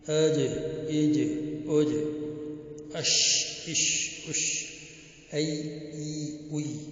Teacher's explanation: Number 4 شجریہ. یہ منہ کے درمیان سے نکلتے ہیں. شجر کے معنی ہے منہ کے درمیان.